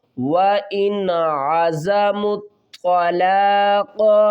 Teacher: آگے کیونکہ حروف حلقی میں سے عین آ رہا ہے تو یہاں پر ہم نون کی آواز کو ظاہر کر کے پڑھیں گے